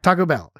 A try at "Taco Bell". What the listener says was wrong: I say it more like Taco Bell, but it's the same style. The point is, you don't say Taco Bell. You don't put the emphasis on the bell.